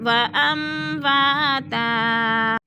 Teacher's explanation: دو زبر تنوین وقف کی صورت میں ہم نے ایک زبر میں بدل کر پڑھنا ہے. وَأَمْوَاتًا.